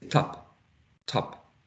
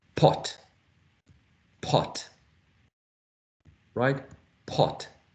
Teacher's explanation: say top top we say top top it's an unreleased plaz it doesn't have aspiration